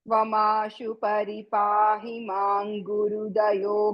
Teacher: మాం గురు అన్నప్పుడు కలిపి చెప్తే కఖ గఘ ङ ఆ ధ్వని రావాలి, పెదాలు ముయ్యకుండా